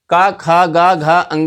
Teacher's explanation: खा का उच्चारण ध्वनि भी कंठ से ही है, क्योंकि का वर्ग के वर्ण जो हैं का, खा, गा, घा, अंगा, कंठ से उच्चारण होता है इनका